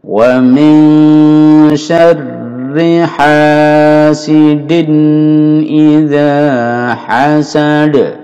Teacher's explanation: Wa min ini nun sukun bertemu shin ikhfa.